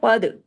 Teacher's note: कद काफ को हैवी कीजिए। दाल पे कलकला कफ इसलिए वो तो है ही सेवन हैवी लेटर्स के अंदर और दाल जो है उस पे कलकला होगा क्योंकि वो कुतुबजद की फैमिली से और कंडीशन यहां पूरी हो रही है।